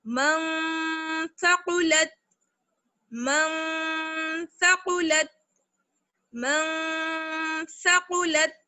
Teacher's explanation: ایک الف کی برابر ٹھہریں گے اور آواز کو ناک میں لے کے جانا ہے، آواز کو چھپا لینا ہے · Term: اخفا